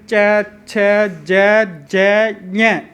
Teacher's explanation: च वर्ग तालु से बोलते हैं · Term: तालव्य वर्ण